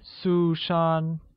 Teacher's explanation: sue-shaun is pronounced with two high level tones